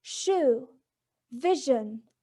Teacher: And then we move to sh in shoe and j in vision. The air is forced through the tongue and points just beyond alveolar ridge, and they are both palato-alveolar.